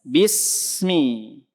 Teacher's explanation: Suara s-nya itu dialirkan terus sampai ketemu mim. Sampai ketemu huruf selanjutnya baru selesai dia. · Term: rokhwah